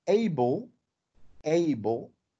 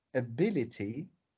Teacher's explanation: when it is an adjective uh a is a full vowel